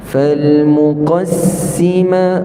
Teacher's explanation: qaf itu tebal. Sin ada safir, ada rakhawah pada sin. Ma dua harakat, man asli.